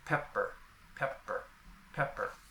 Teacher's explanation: It occurs in stressed syllables, that is, before a vowel. The first P has aspiration, while the second P is soft with no aspiration.